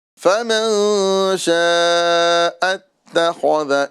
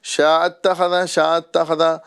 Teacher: حمزہ کو ہمیں حذف نہیں کرنا ہے